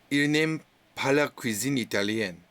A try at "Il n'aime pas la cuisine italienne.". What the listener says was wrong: Très bien.